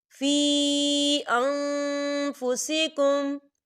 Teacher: من خطبۃ النساء او اکننتم فی انفسکم، فی، یا دیکھیں یا مدہ ہو رہا ہے، یا ساکن سے پہلے زیر ہے اور اس پہ مد بھی ہے، تو ہم اسے 4 حرکت کے برابر کھینچیں گے